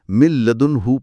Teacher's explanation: نون کی آواز مکمل طور پر ختم، کوئی غنہ نہیں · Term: ادغام